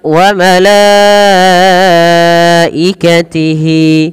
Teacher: wajib kita panjangkan sepanjang empat harakat karena ada bacaan berupa mad wajib muttasil Apa itu mad wajib